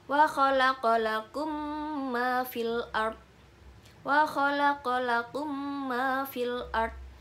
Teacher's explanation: Kemudian yang kedua ada idgham mislan, yaitu serupa artinya ketika ada mim sukun bertemu dengan mim. Cara membacanya dengan membaca mim disertai gunnah dengan panjang 2-3 harokat.